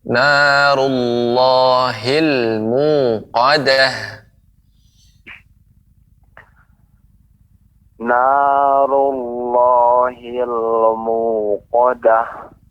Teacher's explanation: hil lam tidak dibaca memantul